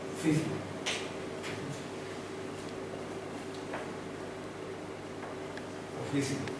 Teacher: Esta O es afechada, no es oficio, es más bien oficio. arrimándose a la U.